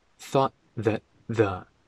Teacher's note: I've always thought that the T in thought isn't pronounced. Also, the T in that isn't pronounced.